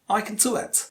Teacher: there is only one content word, just one content word, do. So the rest is unstressed.